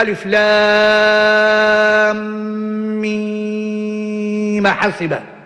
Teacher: الميم أصلها ساكنة، إن اعتدينا بالأصل نمد مدا مشبعا